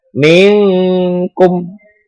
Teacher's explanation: Huruf kaf. Cara membacanya samar-samar berbentuk huruf kaf. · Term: ikhfa hakiki